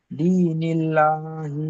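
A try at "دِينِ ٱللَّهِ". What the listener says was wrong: হ্যা দি টান দেন দলিল্লাহি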